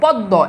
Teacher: এখানে দয়ের উচ্চারণ দ্বিত্ব হয়েছে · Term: দ্বিত্ব উচ্চারণ